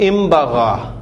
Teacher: نون ساکن کے بعد جب یہ با آ جاتا ہے حرف تو پھر اس کو نون ساکن کی آواز نہیں بولی جاتی بلکہ میم کی آواز کے ساتھ پڑھا جاتا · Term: میم کی ساؤنڈ